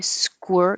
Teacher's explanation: So you have a weird combination of a K and a W squir. Your lips get small at the same time you're making your K.